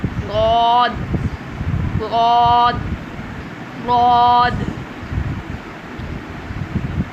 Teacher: زبان کا دایاں یا بایاں حصہ اوپر والی داڑھوں کے کناروں سے لگائیں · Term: حرف غاد